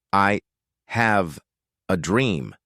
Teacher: Notice the rhythm. I is soft. Have is strong. A is soft. Dream is strong. It's like a heartbeat.